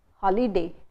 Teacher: Similarly, you don't say holiday, because if you're saying holiday, you're putting the stress on the first, you're putting equal stress on both syllables